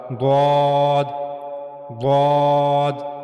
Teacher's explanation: ضاد کی ادائیگی کے لیے زبان کا کنارہ، زبان کا دائیں طرف کا کنارہ، زبان کا سیدھی طرف کا کنارہ اور اوپر کے داڑھوں کی جڑیں، یعنی زبان کا سیدھی طرف کا کنارہ جب اوپر کے داڑھوں کی جڑوں سے جا کر ملے گا تو وہاں سے ضاد عطا ہوگا